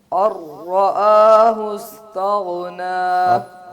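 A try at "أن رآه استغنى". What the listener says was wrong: پھر آپ نے ہلا دیا غین کو.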